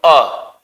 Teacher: ना जीभ आगे की ओर गई ना पीछे की ओर। जब जीभ ना तो आगे की ओर जाए ना पीछे की ओर जाए, बीच में रहे। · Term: मध्य स्वर